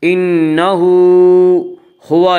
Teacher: انہ نون مشدد غنہ ہوگا، غنہ کی مقدار 1 الف ہے۔ انہ ہا کے اوپر الٹا پیش ہے، الٹا پیش قائم مقام ہے واو مدہ کے، اس لیے الٹا پیش کو 1 الف کے برابر کھینچ کر پڑھیں گے